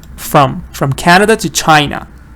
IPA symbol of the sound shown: ə